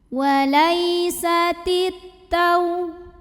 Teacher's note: maka alif lamnya tidak dibaca atau diidghamkan langsung ke ta. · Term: alif lam syamsiyah